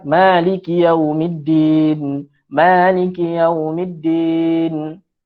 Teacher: Mim baris atas, mim baris atas bertemu dengan alif, iaitu huruf mad asli itu, maka 2 harakat lah kena panjangkan.